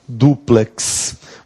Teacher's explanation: a sílaba tônica é o du